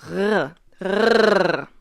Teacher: uvular, meaning it is produced with your, the back of your tongue at your uvula, which is the little thing that dangles in the back of your tongue. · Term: voiced uvular trill